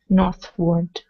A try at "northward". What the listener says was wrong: Word. Instead of ward, word. Northward.